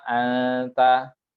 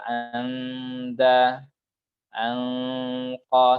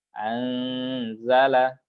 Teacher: yang berfungsi pada muqfa itu hanyalah khaysum, nunnya itu pada khaysum saja tanpa ada pengaruh dari lidah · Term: ikhfa